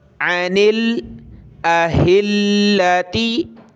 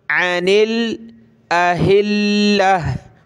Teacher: गोल ता वक़फ़ में जब हम रुकते हैं तो हा में कन्वर्ट कर देते हैं, हा बना देते हैं। ठीक है। यहाँ हम रुक रहे हैं तो इसलिए हमने इसको हा पढ़ा वक़फ़ की सूरत में।